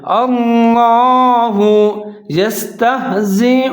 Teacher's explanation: سب سے پہلا لفظ ہے اللہ، اس کو آپ نے موٹا پڑھنا ہے، باریک نہیں پڑھنا. اللہ یستہزئ، اب یہاں حمزہ کے اوپر پیش ہے تو آپ نے او پڑھنا ہے، او نہیں پڑھنا.